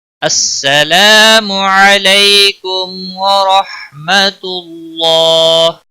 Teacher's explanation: السلام الف مدہ ہے، ایک الف کے برابر کھینچ کر پڑھیں گے، منہ کو کھینچنا نہیں.